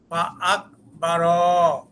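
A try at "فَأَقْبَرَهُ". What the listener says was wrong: এই যে 12 এখানে টানটা হবে না, 12 এরকম হবে। ফা আকবারা কপে কলকলা হবে। ফা আকবারা 12 এই টান হয়ে গেল, এই টানটুকু হবে না। ফা আকবারা এই যে 12 টান হলো, টান হলো 12 পেছনেটা পরে, আগে যতটুকু বলি এতটুকু শুদ্ধ করেন।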